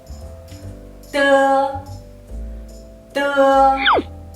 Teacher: When you pronounce it, your tongue touches the part of the mouth behind the upper front teeth. It's similar like the English alphabet de. · d is an alveolar sound but not aspirated